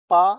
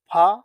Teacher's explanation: प अल्प प्राण हैगा फ महा प्राण होगा